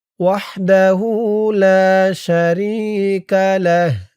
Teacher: থামার কারণে এই যে হার উপরে পেশটা সাকিন হয়ে গেছে